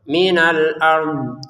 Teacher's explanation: dari pangkal lidah sampai ke ujungnya itu menyentuh gigi atas ya, maka sisinya juga menyentuh. Minal ard itu huruf dot.